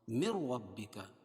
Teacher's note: یہاں ادغام بلا غنہ ہوگا کیونکہ نون ساکن کے بعد ادغام بلا غنہ کے 2 حرفوں میں سے را آ رہی ہے